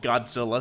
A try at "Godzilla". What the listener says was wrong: Godzilla? You said Scylla, like with a C. Godzilla.